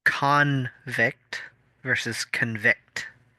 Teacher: The stress is on the second half for the verb, but on the first half for the noun.